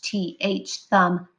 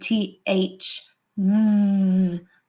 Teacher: two sounds for th th thumb the unvoiced sound and th mm the voiced sound